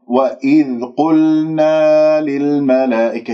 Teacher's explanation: لاحظ أنا نطقت اللام ولا زالت الشفاه مضمومة، وهذا خطأ، لازم أصفيها. قلنا، واللام يجري فيها صوت فترة زمنية بسيطة لأنها من أحرف التوسط